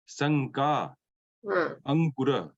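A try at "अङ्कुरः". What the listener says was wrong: Very good. Ankuraha.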